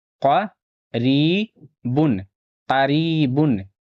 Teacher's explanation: یا ساکن سے پہلے زیر ہے، تھوڑا کھینچ کر پڑھنا ہے، یا مدہ ہوگا، اور یہاں با کے اوپر تنوین ہے، نون ساکن کی آواز آئے گی